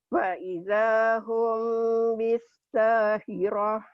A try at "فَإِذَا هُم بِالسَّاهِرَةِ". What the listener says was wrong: Humnya ditahan, ikhfa sapawi. Mim mati ketemu ba. Fa'idha hum bindeng.